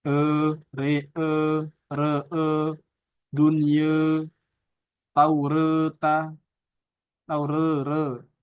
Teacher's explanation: Ketika antum membaca atau membunyikan huruf, yang huruf tersebut antara kasroh dan fathah, dia lebih condongnya ke fathah. Jadi bunyinya itu vokalnya e, e, re, re, dunye, taureta, taure, ra, re, re, ri. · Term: taklil